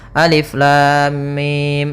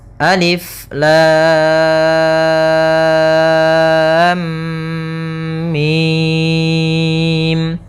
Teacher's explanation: Harusnya lamnya kita panjangkan 6 harokat dulu, baru ditahan mimnya sebanyak 2 harokat, karena di sini ada mim ketemu mim, kemudian baru mim. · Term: mad lazim harfi mutsaqqal